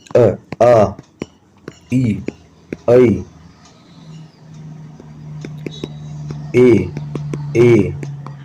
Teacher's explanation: आपके होठ पीछे की तरफ जा रहे हैं, ना कि गोल हो रहे हैं। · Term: अवृत्ताकार